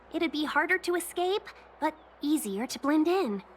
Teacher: She has a vocal fry and breathiness.